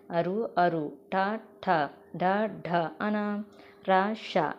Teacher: నాలుకతో గట్టిగా అంగిరిని తాకుతూ పలికే అక్షరాలు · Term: మోర్ధన్యాలు